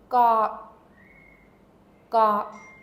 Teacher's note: the g at the end has absolutely no sound it's not released it's actually stopped you just need to prepare your mouth like you're getting ready · I'm using the back of my tongue to stop the sound.